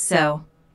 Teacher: Language notes, so. Notice how the O sound is drawn out here, combined with the intonation, which shows boredom